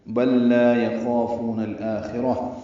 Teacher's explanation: نون کو الآخرہ کے لام سے ملا دیں گے، اظہار قمری ہوگا، حمزہ اقصی حلق سے ادا کریں گے، 2 حرکات لمبا کریں گے. مد بدل ہی خا پر ہے، را پر ہے، اور را کو تا مربوطہ سے ملا دیں گے، وقفاً یہاں میں تبدیل ہو جائے گی.